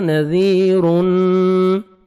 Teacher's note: کھینچنا ہے، جاءنا نذیر، یہاں پہ سٹاپ نہیں کرنا ہے، نذیرن، زال کو نرمی سے ادا کرنا ہے اور 1 سیکنڈ کھینچنا ہے